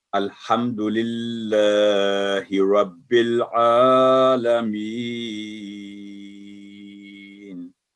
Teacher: جب وقف کریں گے آیت کا اینڈ ہے تو یہاں جو یا مدہ ہے اس کو لمبا کر کے پڑھیں گے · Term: مد عارض وقفی